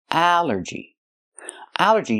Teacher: It's three syllables. Allergy. The stress is on the first syllable.